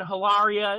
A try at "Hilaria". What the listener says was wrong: Well, I'm sorry, but I think the H is silent. I think it's Hilaria. I sort of think I remember, like, it was like Hilaria.